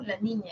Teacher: vas a decir la L, el aire sale por los costados